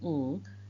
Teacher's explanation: the tongue back comes very close and touches the velum or the soft palate, and that closes off the mouth completely and the oral cavity, and that means the air can only escape through the nose, which is what makes it a nasal sound and a velar sound, and it's voiced, so it's a voiced, velar, nasal.